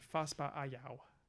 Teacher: And to be, for the benefit of those who aren't used to our romanization, this is something more like, this is a uvular fricative, Hoska. And allophonically, we back vowels, we back a at least next to the uvular